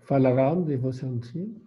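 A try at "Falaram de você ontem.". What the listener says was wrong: Maintenant, avec bonne intonation, parce que là, c'était presque une question. Falaram.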